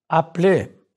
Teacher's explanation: Note how the E instable is not pronounced.